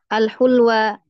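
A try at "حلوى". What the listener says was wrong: bukan hulwa, halwa. Tadi hulwa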